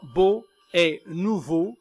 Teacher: c'est le O fermé, écrit O, qui rime